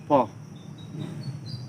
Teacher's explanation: Voiceless plosive labial is pa